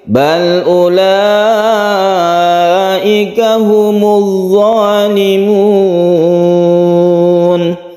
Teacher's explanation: Kita baca mat a'id li sukun, panjangnya bisa sampai 3 alif.